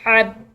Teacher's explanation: با مشدد، ٹھیک ہے، دو دفعہ اس کو ادا کریں گے، ایک دفعہ حا کے ساتھ ملاتے ہوئے اور دوسری دفعہ اکیلا